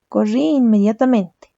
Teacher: Hay un choque entre la vocal I de corrí y la vocal de inmediatamente. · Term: hiato